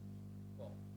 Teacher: ক ধ্বনি উচ্চারণের স্বরযন্ত্রের কম্পন হয় না, তাই অঘোষ স্পর্শ ধ্বনি।